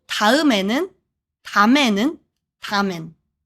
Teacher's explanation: First, 다음 becomes 담. 다음 means next or after, but in casual speech and even in text, Koreans often shorten it to 담. Second, N은 becomes N.